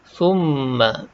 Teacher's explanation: Kemudian thumma, mim bersabdu. Atas huruf mim ada sabdu, wajib kita dengung kat sini, kadar dengung 2 harakat.